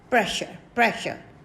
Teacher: r is silent here okay and we pronounce this word pressure pressure